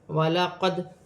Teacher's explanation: دال ساکن ہے، حروف قلقلہ میں سے ہے، قلقلے کے ساتھ ادا کیا جائے گا